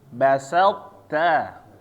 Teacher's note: Ta-nya ingat harus ada hamasnya ya, ada angin keluar.